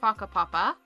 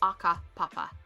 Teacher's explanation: So um instead of saying faka papa which is w h a k a p a p a um and is your genealogy your family history instead of saying papa they would go for aka papa they have a hard stop and a guttural in a switch so faka and they skip the h and that is just that specific region